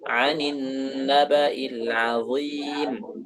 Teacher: Azim harus nempel ujung lidahnya ke ujung gigi. Karena kalau tidak nempel nanti suaranya tidak jelas seperti huruf ghain.